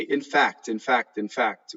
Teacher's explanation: we say so fast in English that there's an assimilation of the lip